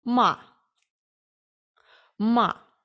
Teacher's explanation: четвертий тон або різкий тон він схожий на якесь таке різке заперечення